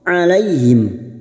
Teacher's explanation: huruf Ain yang memiliki sifat tawasud dan jahr